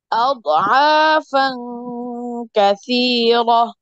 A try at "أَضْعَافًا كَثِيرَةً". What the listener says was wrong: আপনার দদ কলকলা হয়ে যায়। দদের কলকলা হরফ কয়টা? এখানে দদ নাই, তাই না? তাহলে আমি যদি বলি আদ, তখন কলকলা হয়ে যায়। আদ, আদ, আদ।